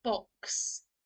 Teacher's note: it's almost like two sounds together, the K sound and the S sound.